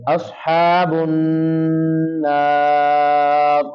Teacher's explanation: نون مشدد ہے وہاں پہ کیا کریں گے غنہ کریں گے